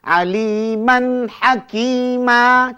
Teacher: Mana bacaan isbat. Kalau baca terus, tidak ada bunyi mat.